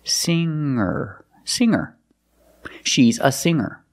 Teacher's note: The G is not pronounced with a hard G sound. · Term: nasal sound